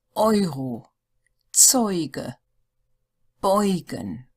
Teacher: the first vowel combination is EU, which is pronounced oi, just like the English, oi.